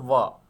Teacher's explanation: तो दंत और ओष्ठ, जो हिंदी माध्यम से पढ़े होंगे, दंत और ओष्ठ, देखिए ध्यान से, दंत और ओष्ठ, तो दांत और ओठ दोनों मिले तो व, ठीक है, अगर दोनों में से एक निकाल देंगे तो हमारा ये काम ही नहीं करेगा, ठीक है।